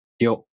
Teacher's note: To pronounce Ryo, the tongue moves from the [ɾʲ] sound to the [o] vowel.